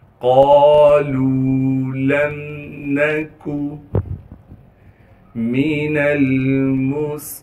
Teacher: لام کو واو مدہ سے ملانا ہے، واو مدہ ہونے کی وجہ سے لام کو ایک الف کے مقدار کھینچیں گے، اس لام کو میم ساکن سے ملائیں گے بغیر غننے کے، نون کو بغیر کھینچے پڑھنا ہے، کاف کو باریک کر کے بغیر کھینچے پڑھیں گے۔ · قالوا لم نکو من المصلین، میم کو بغیر کھینچے پڑھیں گے، نون کو لام ساکن سے ملائیں گے، اس میم کو بھی بغیر کھینچے پڑھنا ہے، صاد کو موٹا کر کے صاد کی سیٹی ادا کریں گے، صاد کو آگے لام سے ملا دیں گے جس پر تشدید ہے، تشدید ہونے کی وجہ سے تھوڑا سا ٹھہراؤ رکھیں گے، پھر لام کو آگے یا مدہ سے ملا دیں گے، یا مدہ ہونے کی وجہ سے لام کو ایک الف کے مقدار کھینچیں گے۔